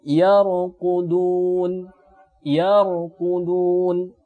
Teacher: Nah, ketika huruf ra mati dan huruf di belakangnya berharakat fathah, maka ketika kita matikan huruf ra-nya dibaca dengan tebal